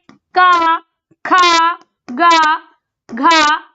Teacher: का वर्ग हमारा कंठ से बोला जाता है